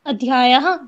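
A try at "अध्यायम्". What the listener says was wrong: No, it's not Adhyayah. No. Adhyaya. Where is Adhyaya? Adhyaya is not there. No. Adhyayam. Where is Anuswara? Adhyaya and Adhyayam both are different. It is the Ayush Kamiyam Adhyayam. It is second, Dvitiya Vibhakti. Adhyayam.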